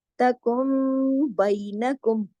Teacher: नून साकिन के फौरन बाद अगर बा आ जाए तो इकलाब का कायदा हो जाता है, यानी बदल जाती है नून की आवाज मीम की आवाज में , तकुन के बजाय यहाँ पे क्या हो जाएगा, तकुम, और